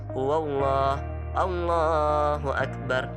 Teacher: Lam jalalah adalah huruf lam yang terdapat pada lafaz Allah. Huruf lam asalnya dibaca tipis, namun ada kalanya dibaca tebal jika bertemu dengan lafal jalalah Allah dengan syarat sebelumnya berharakat fathah atau dhammah.